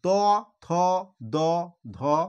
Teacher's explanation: তটা হচ্ছে দাঁতের সঙ্গে, দেখো জিভটা তোমাদের স্পর্শ করছে, দাঁতের সঙ্গে জিভটা স্পর্শ করে উচ্চারণ হচ্ছে, সেই জন্য এই বর্ণগুলোকে বলা হচ্ছে দন্ত বর্ণ। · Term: দন্ত ধ্বনি